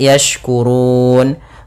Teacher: Cara membacanya itu boleh kita panjangkan 2 harakat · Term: mad arid disukun